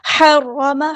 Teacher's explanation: ہا کو وسطی ہے لیکن مڈل تھروٹ سے ادا کریں گے. را ہمارا ہیوی ہے پورا ادا کریں گے.